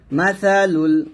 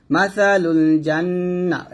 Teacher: মাসা সা পাতলা হবে, জিহ্বাটা উপরে দাঁতে আগে লাগবে।